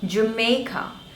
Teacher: Three syllables, Jo, May and Ka. The stress is on the second one, May,